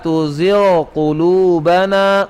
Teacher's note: غین کا آپ نے قاف میں ادغام نہیں کرنا